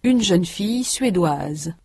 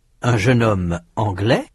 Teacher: In sound, the feminine forms anglaise and suédoise have a final consonant z that the masculine anglais and suédois do not. In the masculine, the final s is not pronounced.